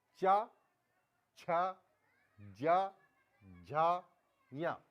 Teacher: च वर्ग का उच्चारण स्थान तालू होगा